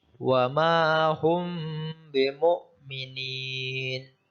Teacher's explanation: huruf mim dimasukkan ke huruf ba dan dibaca sedikit mendengung. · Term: ikhfa safawi